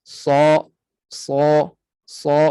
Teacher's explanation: Jadi sad tebal dan padu bunyi, tebal dan penuh bunyi. Sa, sa, sa, kita rasa nak keluar suara itu, kita rasa terhimpit, kita rasa sempit.